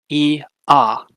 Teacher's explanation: ah is an open vowel or a low vowel because your mouth is mostly open and your jaw is low your tongue is low too